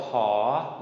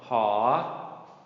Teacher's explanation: This letter is called ha, long rising tone.